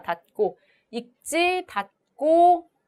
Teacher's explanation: 디귿의 영향으로 기역이 된 소리로 발음이 나는 경음화가 일어납니다